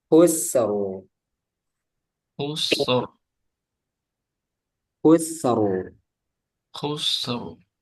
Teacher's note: Khus itu tipis. Khus. Kemudian ro itu tebal. Ro. Khusru.